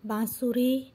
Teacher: बांसुरी बोलने पर आपको नाक से बोलना पड़ता है, थोड़ा इसको चंद्रबिंदु लगता है तो वो अनुनासिक होता है।